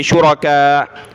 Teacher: جب رکیں گے شرکاء، حمزہ کو ساکن چھوڑ دیں گے